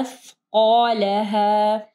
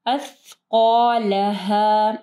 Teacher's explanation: سا اور زال کا مخرج ایک ہی. جب آپ سا پڑھیں گے تو آپ کی زبان کی نوک اوپر کے دو دانتوں کے پاس لگانی ہے. قا کو ہیوی پڑھنا ہے، ٹھیک ہے.